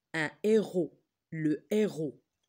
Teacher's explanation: et lorsqu'on a un h aspiré on fait pas la liaison